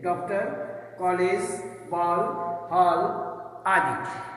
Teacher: इसका उच्चारण आ तथा औ के बीच का होता है।